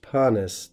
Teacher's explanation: Note, of course, the long vowel length of that first syllable of panis.